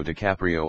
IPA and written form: dɨˈkæpri.oʊ (DiCaprio)